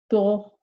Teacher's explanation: there's a greater portion of the tongue touching my touching my top hard palate